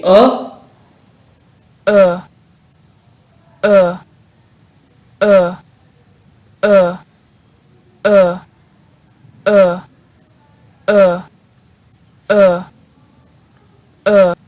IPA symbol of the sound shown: ʊ